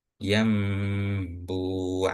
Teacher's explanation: Nun sukun bertemu ba. Iqlabnya itu dibaca dengung juga.